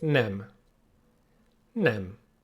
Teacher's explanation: Sounds a bit similar to when you say tell or bed. E. Nice and short and a bit closed.